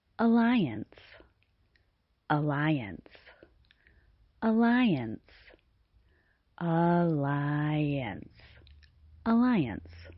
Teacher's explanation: The first sound in the word alliance is the unstressed vowel sound schwa pronounced like a schwa is also known as the natural or neutral vowel sound. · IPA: ə